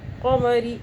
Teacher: را کے نیچے زیر آ رہا ہے، باریک پڑھ رہے ہیں ہم